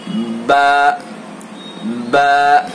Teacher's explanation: با کو دونوں ہونٹوں کا جو تری والا حصہ ہے وہاں سے ادا کریں گے. با با کہیے با، تری والے حصے سے با.